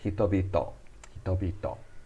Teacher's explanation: That's pronouncing hito twice, but the second time it turns into a B sound.